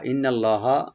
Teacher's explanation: নুন মুসাদ্দিদ এখানে ওয়াজিব গুন্না